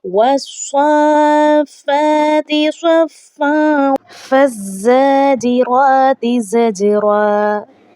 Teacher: ज़ा को मजबूती के साथ पढ़ा जाएगा, जीम पर कलकला किया जाएगा, क्योंकि ये हरूफ़े कलकला में से है।